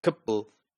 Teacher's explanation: the schwa sound from the second syllable is elided